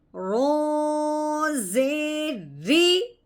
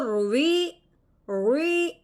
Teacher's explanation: رو کی نیچے جب زیر ہو، اس کا قاعدہ یہ ہے کہ اس رو کو ہم نے باریک کر کے پڑھنا ہے۔